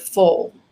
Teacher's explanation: your tongue body is much further down and the sound is more it's darker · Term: dark l